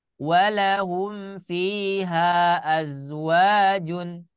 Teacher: mad munfasil, yaitu mad yang berada di dua kata, contohnya seperti ini, itu boleh dibaca 2 harokat